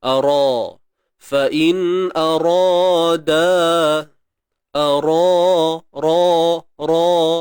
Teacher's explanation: Ra ni jangan lupa tebalkan sebab baris atas. Jangan ara, tak mau bunyi penyek-penyek macam tu.